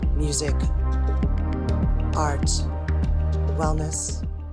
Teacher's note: She has a very breathy and deep voice